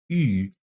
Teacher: what I did was I made an e sound and I rounded my lips. So in terms of phonetics, it's actually closer to e than it is to oo.